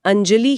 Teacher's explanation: चूंकि ज च वर्ग से है तो वो बिंदी ञ का रूप ले लेगी।